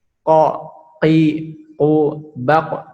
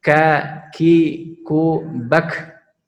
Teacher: huruf qaf jahar tidak keluar nafas, huruf kaf itu hamas ya. Hamas yaitu dengan menghembuskan nafas